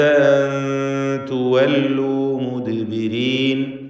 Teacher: സക്നത നൂനും ശേഷം താവും ഇഖ്ഫ ഹഖീഖി നൽകി മറച്ച് മണിച്ചു ഉച്ചരിക്കണം നൂനിനെ